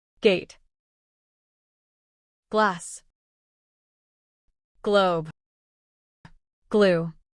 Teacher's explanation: hand on your throat as you say G and notice the vibration. This happens because G is a voice sound.